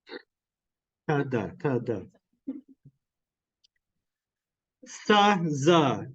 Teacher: Anyway, so the alveolar sounds are made with your tongue pointing towards or touching your alveolar ridge. So in the case of ta and da, your tongue is touching your alveolar ridge. · With sa and za, your tongue is not touching, but it is very close to.